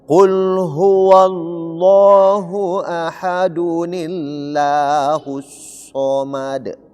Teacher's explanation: Jadi la ini, nama Allah ini berubah menjadi tipis karena didahului oleh kasrah.